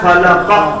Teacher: قاف سائلنٹ ہوگا تو قاف جب سائلنٹ ہوا تو قلقلہ آ گیا